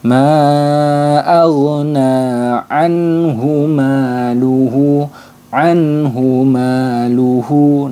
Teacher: Nun sukunnya itu harus dibaca jelas tidak boleh ditahan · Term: izhar halqi